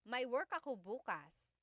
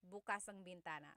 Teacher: If you say bukas, the emphasis is on the second syllable. That means open.